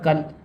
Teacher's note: وتكون الجبال كالعهن، یہاں پر کاف الف زبر کا ہے لیکن لام کے اوپر ساکن آ گیا ہے اس لیے کاف کو لام میں ملائیں گے اور الف نہیں پڑھا جائے گا